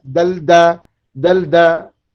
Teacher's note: Cantuman gigi dengan langit-langit keras tuh itu dal.